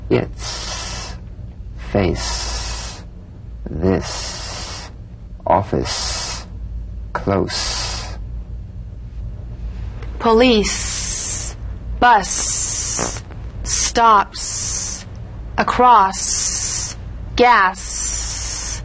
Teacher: the S is like the Z except it's unvoiced so it's the same tongue placement as the Z the Z the S is like a gentle escape of steam · unvoiced s sound fricative tongue to gum Ridge the S is like the Z except it's unvoiced so it's